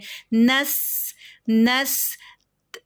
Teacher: سین کی سیٹی پرومیننٹ سنائی دینی چاہیے